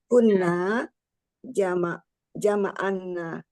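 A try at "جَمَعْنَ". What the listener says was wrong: Jama' ainnya disukun. Ainnya disukun Umi. Jama'na. Afananya nggak panjang. Jama'na.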